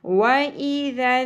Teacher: ذال نرمی سے پڑھا جائے گا اور نون مشدد، نون کے اوپر تشدید آ گئی تو یہاں پر ہم غنہ کریں گے۔ وَإِذًا، غنہ کیا ہوتا ہے؟ آواز کو ناک میں ٹھہرا کر رکھنا، کھینچنا، ٹھیک ہے، لمبا کرنا، نون کی آواز کو ہم نے لمبا کرنا ہے۔